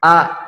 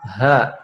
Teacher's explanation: Bedanya a tidak keluar nafas, ha keluar nafas.